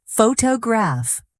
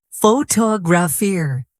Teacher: In photograph, the stress is on the first syllable, but in photographer, it moves to the second